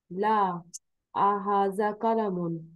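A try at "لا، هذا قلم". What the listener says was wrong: ला हाजा कलमुन, विदाउट हमजा, बगैर हमजा के।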